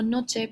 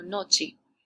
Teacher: el ascenso de vocales Es el cambio en la altura de la producción de la e